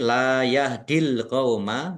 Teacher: Lam fathah alif juga mad thobi'i. Dibaca panjang dua harakat.